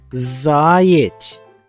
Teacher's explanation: Правильно, наголос падає на перший склад.